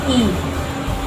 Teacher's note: vokal tinggi depan, itu dengan menggerakkan bagian depan lidah ke langit-langit sehingga terbentuk rongga resonansi seperti pengucapan bunyi I.